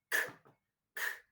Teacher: the back of the tongue goes against the soft palate. And then the articulators open up abruptly, allowing the air to escape with an explosion, but without any vibration.